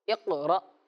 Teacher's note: حمزہ ساکنہ کو جھٹکا دے کر پڑھتے ہیں